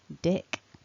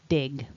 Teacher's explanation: is not voiced what we're aiming for is dick not dig so no voicing at the end of the syllable